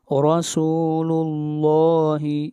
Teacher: را کو موٹا پڑھا جائے گا اور لفظ اللہ کو بھی موٹا پڑھا جائے گا